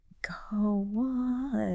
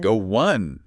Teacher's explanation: But naturally, we insert a tiny ooh sound. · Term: Glides